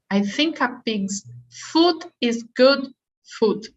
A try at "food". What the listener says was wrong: Food with more D, because it's too much T at the end. So food, and not food.